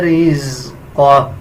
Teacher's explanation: یا را کو پر یعنی موٹا پڑھا جائے گا